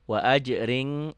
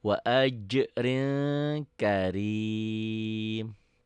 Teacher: Wa ajrin, n-nya jadi tambah g.